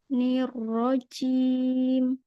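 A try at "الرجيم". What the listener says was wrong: Masih cim ya, Ar-rojim, coba. Masih cim gitu ya. Ja, ja, ja. Bersihkan. Ja. Di tengah makhraj tengah lidah. Rojim, Rojim. Masih rojim ya. A'udzu billahi minasyaitonir rajim. Masih PR di gymnya ya, ya?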